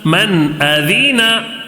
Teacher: نون کو ظاہر کر کے بغیر غنہ کے جلدی پڑھیں گے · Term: نون ساکن کا اظہار